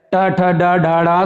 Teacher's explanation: मुंह का मतलब मूर्धा से, मूर्धन्य, मूर्धा से बोला जाता है ये टा वर्ग।